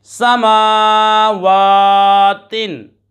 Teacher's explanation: मीम दोनों ओठों के खुश्क हिस्से से अदा होता है और वाव दोनों ओठों की गुलाई से अदा होता है, वहीं से अदा करें।